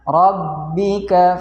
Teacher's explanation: ra berbaris fathah dibaca tebal. Kemudian ada ba, setelahnya ada ba, yaitu ba-nya ada tasjidnya, ada penekanan.